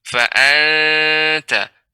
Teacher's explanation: Yang benar adalah ikhfa, disamarkan nunnya. Fa'anta. Tidak sampai ke nun, ya.